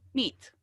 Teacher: meat, para decir carne, es una i y súper seco.